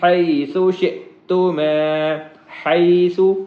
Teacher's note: ہا جو ہے یہ حلق والی ہا ہے، اور سا ہے اس کو باریک پڑھتے ہیں، دونوں دانتوں کے درمیان میں یا اوپرلے دانتوں کے پیچھے زبان لگا کے وہاں سے اس کا مخرج نکلتا ہے، حیثو نہیں ہے، حیثو شئتما۔